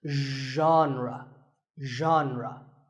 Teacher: Pay attention to the first sound. It's like sh, but you have to put your voice into it.